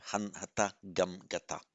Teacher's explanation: We would have expected to see hanta in the normal way, adding the ta onto the root for the past participle form. It's one of these roots that drops the nasal when you add the ta of the past participle.